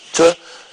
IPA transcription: t